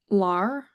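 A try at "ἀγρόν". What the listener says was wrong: Not lar. The first letter. It's not a lambda. You had it right in the second word. Gamma. The inverted lambda.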